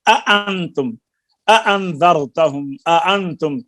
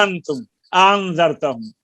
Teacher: چنانچہ اسی طرح جہاں دو حمزہ ہوں جیسے اانتم اانذرتہم اانتم تو جلدی میں کیا کرتے ہیں انتم انذرتہم، تو دو ان کو خوب صاف دونوں کو ان کے مخرج سے تحقیق یعنی جھٹکے کے ساتھ ادا کر کے پڑھیں تاکہ سختی دونوں کی پورے دور پر جو ہے وہ پیدا ہو.